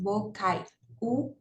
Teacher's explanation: vogal a depois a semivogal i então é realmente é um E aí depois nós temos a vogal u que é tônica ó bocai u né é um som forte é um som · que é primeiro a vogal a depois a semivogal i